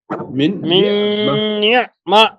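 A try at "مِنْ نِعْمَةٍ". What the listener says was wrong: একটু ধাক্কা হয় আপনার, 5% 10% ধাক্কা হয়ে যায়, ধাক্কাটা হবে না, শুধু আওয়াজটা ভেতরে যাবে। মিন নি'মাহ।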